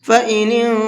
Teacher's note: فإن انتہوا، یہاں نون ساکن کے بعد میں تا ہے اور تا اخفا کے حرفوں میں سے ہے، تو اس نون کے اندر اخفا کر کے پڑھیں گے، ہلکا سا آواز کو ناک میں چھپا کر کے پڑھیں گے